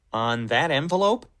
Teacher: he draws out the word on before, which makes the next word a little bit more important.